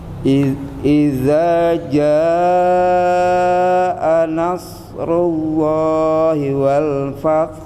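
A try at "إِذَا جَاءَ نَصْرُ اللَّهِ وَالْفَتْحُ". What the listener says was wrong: Oh, rullahnya kurang sempurna lagi Pak. Kurang bulat lagi. Rullahi wal. Terus wal fathnya, wal fath. Taknya kurang aja Pak. Hanya udah dapat, taknya kurang ditekan.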